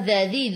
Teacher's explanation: Dzadzi hujung lidah keluar pada gigi depan.